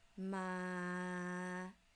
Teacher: This is called number five, rising pitch, from low to high. You start low first. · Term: rising tone